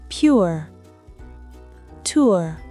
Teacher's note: Le son OUE. Commencez avec un OU court et arrondi, puis détendez les lèvres vers E. Ce son est rare et souvent instable.